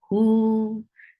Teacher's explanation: For Dhamma, circle your lips. And this is a short vowel. Who. 2 counts long because you are considering this wow, this small wow, which is called wow saghira, as a big normal natural wow.